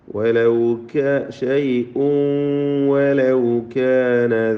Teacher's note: തൻവീനിനെ ഇദ്ഗാം ബിഗുന്ന ചെയ്ത് വാവിൽ ലയിപ്പിച്ച് മണിക്കണം.